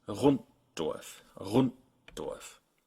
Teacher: So a combination like rund with a T at the end and Dorf together can show up either as Runddorf with an audible T in the middle if you're pronouncing it really carefully, or more often you'll just stop with your tongue in the T position for a moment.